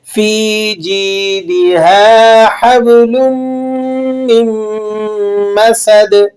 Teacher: دال پہ آپ نے قلقلہ کرنا ہے، اسے قلقلہ کبیرہ کہا جاتا ہے.